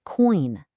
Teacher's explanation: You start with that O sound and then you glide right into the eye. · For oi in coin, your lips round up and then glide outward.